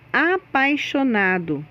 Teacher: na palavra apaixonado, o A é vogal e o I é semivogal. A pronúncia do A é mais forte que do I.